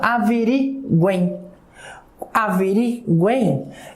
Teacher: Olha só, eu tenho um I escondido quando eu pronuncio. Eu tenho um Izinho escondido aqui. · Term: tritongo